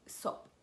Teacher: Même les Iraniens, quand ils parlent facilement, ils zappent le he à la fin et ils disent sob.